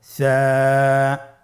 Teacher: জিহ্বার আগা সামনের উপরের দুই দাঁতের আগার সঙ্গে লাগিয়ে উচ্চারিত হয়। আমরা আমার সাথে আবার উচ্চারণ করুন সা।